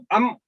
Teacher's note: जब तक दोनों होंठ आपके आपस में मिले नहीं, आप हरफ मीम को अदा नहीं कर सकते